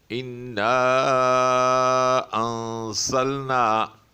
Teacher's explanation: مد منفصل وہ حروف مدہ جس کے بعد حمزہ آئے لیکن اسی کلمے میں نہ ہو، دوسرے کلمے میں ہو، تو اس کو 3 الف کے برابر کھینچا جائے گا، یعنی تقریباً 3 سیکنڈ۔